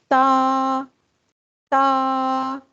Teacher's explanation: زبان کی نوک اوپر والے دانتوں کی جڑ سے لگتی ہے